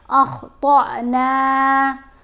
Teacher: اب طا کو تھوڑا جھٹکا دے کر پڑھنا ہے، یہاں طا کو لمبا نہیں پڑھنا